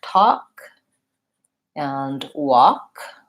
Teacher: and walk the main two elements above those words are that you're gonna have vowel oo in those words which has lip rounding ah and is central vowel the L is silent so it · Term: vowel ah